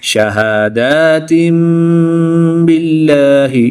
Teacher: दो ज़ेर की तनवीन के बाद हर्फ बा है तो यहाँ पर इक़लाब होगा, यानी कि तनवीन दो ज़ेर की तनवीन को मीम से बदलकर गुन्ना ज़मानी करके पढ़ेंगे।